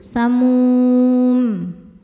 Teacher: Mad thobiinya wau sukun didahului baris dhammah. Huruf yang disukunkannya mim. Maka mimnya ini panjang. Boleh dua atau empat atau enam harakat.